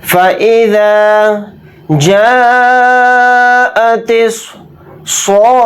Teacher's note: یہاں پر الف مدہ ہے، الف مدہ کے بعد حمزہ اسی کلمے میں ہے، تو اس میں مد متصل کا قاعدہ یہاں پر ہو رہا ہے. اس مد کو ہم 4 الف کی مقدار کھینچ کر پڑھیں گے. صاد کو موٹا یعنی پر پڑھیں گے.